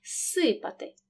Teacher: префікс з перед глухим с тому він переходить у парний глухий маємо два звуки с тому в транскрипції показуємо один подовжений звук